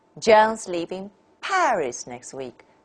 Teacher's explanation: Paris is the last stressed and the most prominent word. It's most stressed. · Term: nucleus